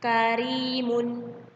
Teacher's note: Tetapi ro tarkik ini tidak dibaca seperti ro tafkhim kemarin, tebal rongga hidungnya, rongga mulutnya. Ro tarkik ini hanya biasa saja dibacanya tipis ya.